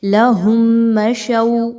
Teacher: میم ساکن کے بعد جب بھی آپ کو میم مل جائے تو وہاں پر میم مشدد کا غنہ بہت اچھے انداز میں کرنا ہے، اور یہاں پر ادغام شفوی آ گیا میم ساکن کے احکام میں سے، تو ہم نے یہاں پہ غنہ کیے بغیر آگے نہیں جانا۔